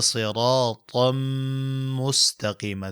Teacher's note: تنوین وروسته میم دغه نون ساکن وروسته حرف کې پټ شوی دی